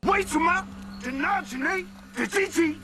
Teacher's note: the intonation and rhythm sound like a young Chinese rapper who is trying to imitate American rappers' English flow. The original tones were totally lost.